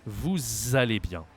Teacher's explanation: So I know this is not a Z here, but S in French works as if it was the Z sound a lot. It can be S or Z depending on the context. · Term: liaison